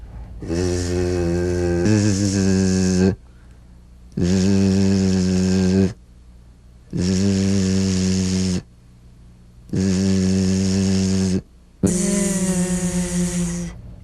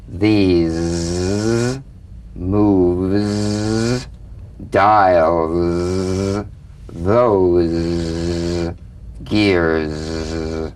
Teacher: feel a smooth, strong vibration in the teeth and in the front of the tongue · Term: Z sound